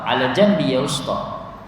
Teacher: Itu ada slang dia, slang kampung, Arab kampung. Ala jambi, dia jim jadi ga.